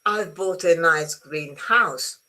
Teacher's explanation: Here the stress is on the house. I bought a nice green house.